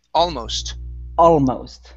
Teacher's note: stress at the very beginning